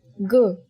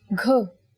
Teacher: when you say g without aspiration, you get g. But when you say it with aspiration, you get gh.